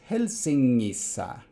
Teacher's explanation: that NG is actually a geminate velar nasal